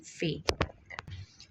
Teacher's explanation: اب آپ فے کو ادا کر کے دیکھیں تو آپ کے نیچے والے ہونٹ اور اوپر والے دانت استعمال ہو رہے ہیں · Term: لب دنتی